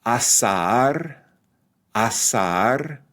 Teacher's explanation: So in a word like this, when the vowel, the strong vowel is the same vowel, like a, in asar, or contraataque, it's pronounced as two distinct syllables, or perhaps one slightly longer syllable.